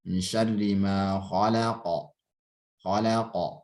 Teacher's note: Memantulnya suara huruf hijaiyah saat disukun atau waqaf. Memantulnya itu ke arah e. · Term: qalqalah